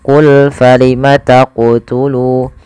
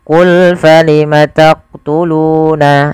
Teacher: Qalqalah artinya memantul. Maka ketika melafalkan huruf qof di sini harus memantul, yaitu qul falima taquulu.